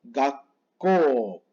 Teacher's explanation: se pronuncia como una doble O. Es decir, que la U no va a sonar.